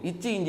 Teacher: நாவின் இடை அன்னத்தின் இடை